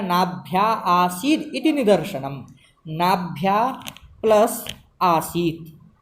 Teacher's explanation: पूर्व में नाभ्या में अंतिम में आ दीर्घ है और आसीद का आदि वाला आ दीर्घ है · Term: पिपीलिका विवृति